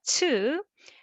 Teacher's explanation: We have aspirated version ㅊ with the lots of air